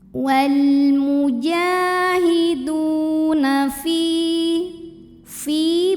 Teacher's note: sebab ada ya sukun sebelumnya baris kasrah, maka huruf fa panjang 2 harokat. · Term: matobi'i zahiri